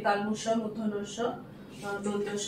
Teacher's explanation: এই যে তালবস্য, মূর্ধন্য-ষ, দন্তস্ব, এটা অঘোষ বর্ণের মধ্যে যেমন পড়ছে, এই তিনটেকে একসাথে শীষ ধ্বনিও বলা হয়, কারণ এই ধ্বনিগুলো উচ্চারণের সময় শীষের মতন একটা শব্দ বের হয়, সেই জন্য এগুলোকে শীষ ধ্বনিও বলা হয়।